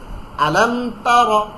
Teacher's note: র জবর রা না কিন্তু, র মোটা করে।